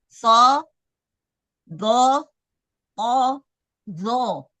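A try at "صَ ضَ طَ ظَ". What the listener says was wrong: Vo-nya longgar. Jangan dia vo.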